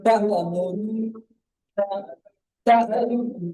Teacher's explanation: হামজার উপরে সাকিন আছে, সাকিন ওয়ালা হামজাকে ধাক্কা দিয়ে বা ঝটকা দিয়ে উচ্চারণ করতে হয়